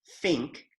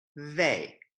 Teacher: An unvoiced TH sound would be something like think, and a voiced TH sound would be like they.